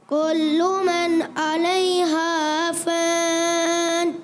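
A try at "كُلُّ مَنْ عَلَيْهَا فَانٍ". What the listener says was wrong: اچھا اس کو کولو، ایسے کولو نہیں پڑھنا، کلو، کاف کی پیش جو ہے وہ صحیح طریقے سے معروف ادا کرنی ہے، کلو، کیا پڑھیں گے؟ کلو۔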